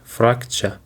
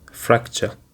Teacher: It is actually have two syllables frag and ch and the stress is on the first syllable